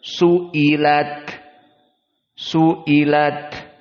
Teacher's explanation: Hamzah dalam keadaan tahkik maka hamzahnya hamzahnya dibaca dengan jelas